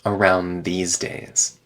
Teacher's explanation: the D gets removed and the N connects to the th